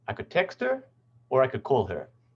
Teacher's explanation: the partial fall here is telling us that there's more information coming about that idea